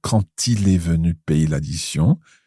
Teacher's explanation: when we have quand followed by a vowel, the D on the end is pronounced, but it's pronounced as a T